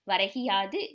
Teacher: கு அப்படிங்கிற எழுத்து கி என்று ஒலிக்கிறது அதுவும் முழுமையாக ஒரு மாத்திரை அளவில் ஒலிக்காமல் அரை மாத்திரை அளவாக குறைந்து ஒலிக்கிறது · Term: குற்றியல் இகரம்